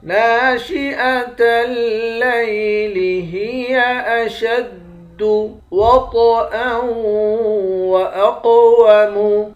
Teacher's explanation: قاف کو موٹا بھی پڑھیں گے اور قلقلہ بھی کریں گے. قاف موٹے حروف میں سے بھی ہے اور قلقلے والے حروف میں سے بھی ہے.